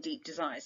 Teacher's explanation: that plosive alliteration deep desires again creates a kind of harshness but a sense of volume as well